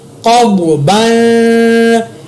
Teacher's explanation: قاف زبر ضاد قب, با دو زبر بن قب بن, یہاں پر میں نے قاف اور ضاد کو پر ادا کیا